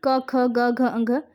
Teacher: कंठ से बोले जाने वाले वर्ण क, ख, ग, घ